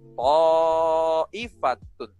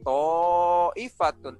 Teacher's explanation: Mad itu panjang, wajib itu wajib dipanjangkan, muttasil dalam satu kalimat. Ta'ifatun itu dalam satu kalimat. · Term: mad wajib muttasil